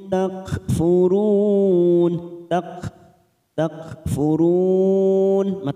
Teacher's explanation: mim sukun Tum dibaca jelas tanpa mendengung namanya Idhar syafawi